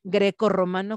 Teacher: que poner grecorromano con un doble r por qué pues porque está en medio de dos vocales y necesito ese sonido vibrante múltiple